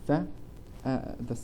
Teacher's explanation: بتلاحظ إنه اللسان طلع ما بين الأسنان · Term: dental